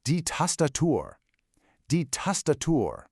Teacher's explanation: You hear how it's a nice open ah sound in both spots?